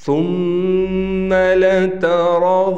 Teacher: یعنی تا کو بھی موٹا نہیں کریں گے، واو کو بھی موٹا نہیں کریں گے، صرف اور صرف را کو موٹا پڑھیں گے